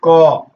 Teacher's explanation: तो केवल श्वास का प्रयोग जो है वह आपके अघोष में होता है। इसमें क्या होता है, कंपन नहीं होता है। जैसे क कंपन नहीं हुआ ना, ये अघोष हो गए। · इसमें सिर्फ हवा बाहर निकला, कंपन पैदा नहीं हुई।